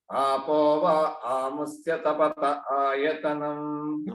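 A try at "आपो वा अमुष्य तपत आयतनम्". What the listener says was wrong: Amushya, not a. There is no dirgham.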